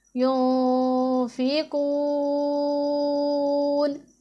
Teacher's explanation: یہاں پر آپ دیکھیں کہ نون میں اخفاء ہو رہا ہے، کیونکہ نون ساکن ہے